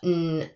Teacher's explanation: So our tongue rests the front of our tongue rests on the alvola ridge. Um and the air is stopped there um and then it escapes back up through the nasal cavity. So that is a N sound. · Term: voiced alveolar nasal